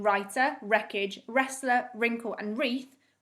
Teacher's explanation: we can't hear the w at the start of the word instead it sounds like it starts with an r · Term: silent w